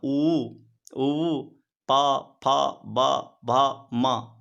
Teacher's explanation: अब आगे बढ़ते हैं तो उपपधमानियानाम ओष्ठ, उकार, ऊकार, प, फ, ब, भ, म, इनका उच्चारण स्थान ओष्ठ है। इनका जब आप उच्चारण कीजिएगा तो ओठ जो है परस्पर मिलता है।